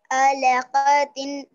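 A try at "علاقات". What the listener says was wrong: Don't don't go for qa alaqatin. Short ones.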